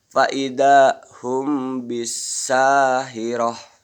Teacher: dibaca dengan menyamarkan mim mati karena dengungan. Nah, mim matinya itu dibacanya tuh disamarkan. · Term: ikhfa safawi